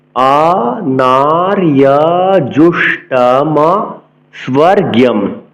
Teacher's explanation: স্ব দন্ত শৈব, দন্তস্বকে এস এর মতো উচ্চারণ করতে হবে, বফলার উচ্চারণ বহাল রাখতে হবে, স্ব বলতে হবে।